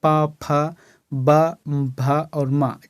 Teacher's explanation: और एक है प वर्ग, तो प वर्ग में क्या आता है, ओष्ठव्य, यानी कि दोनों ओंठ का मिलन होता है